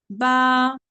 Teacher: और ये सिर्फ शफिया टोटल शफिया यानी कि शफतान से 4 हुरूफ निकलते हैं, मगर दोनों होंठ के जो अंदर वाला पार्ट मिलता ना, जहाँ पे कच्चापन रहता, तरी वाला हिस्सा उसको कहते हैं, तो वहां से बा निकलता · तो उसके बाद है शफविया, यानी कि जो शफतान है ना, शफतान जो चौहता वाला हिस्सा था, हुरूफे शफविया, दोनों होठों की तरी वाले हिस्से से ये हर्फ अदा होते हैं। तरी वाला हिस्सा यानी कि अंदर वाला हिस्सा। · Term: बा बहरिया